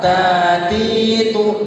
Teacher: huruf ta itu ada sifat hamasnya. Hamas itu desisan, ada desisan. Jadi seakan-akan ada suara yang itu keluar.